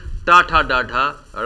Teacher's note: टा वर्ग का उच्चारण मूर्धा से होता है